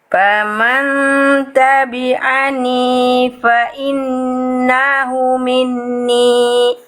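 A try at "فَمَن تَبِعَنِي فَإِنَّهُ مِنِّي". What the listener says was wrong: Oke, panjang pendeknya perhatikan lagi Nah, di sini nun tasydid. Hu-nya berapa harokat hu?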